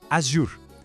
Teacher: Já em Azur, o segredo está no U francês. Faz um biquinho como se fosse assobiar.